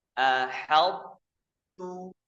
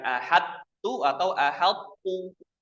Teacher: Yang benar tebalkan to-nya, tipiskan taknya.